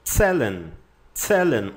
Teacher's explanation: O Z tem som de TS.